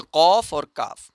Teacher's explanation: कौफ जबान की जड़ और ऊपर का नरम तालु जब ये आपस में मिलेंगे तो वहां से कौफ का मखरज अदा होगा। और इसी तरीके से काफ का जो हमारा मखरज है काफ का मखरज जब हमारे सॉफ्ट प्लेट से थोड़ा सा आगे हार्ड प्लेट टच करेगा वहां से काफ का मखरज अदा होगा।